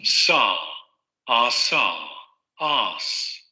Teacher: Tenemos la lengua subida hacia la parte de los alveolos. Ahí se produce la fricación, es decir, el aire va saliendo lentamente y sin vibración de cuerdas vocales. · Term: Alveolar fricativo sordo